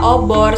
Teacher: Huruf O itu terletak di madia bawah belakang